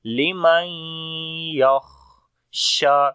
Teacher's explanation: The kha we read in heavy sound, and also we are making hams quality on the kha. yakh, like the continuation of our breath.